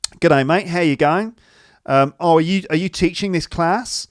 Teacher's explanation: rising intonation when your voice sort of goes up at the end, like that, at the end of sentences